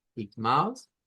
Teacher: lleva una A nasalizada, de hecho es el diptongo AU, nasalizado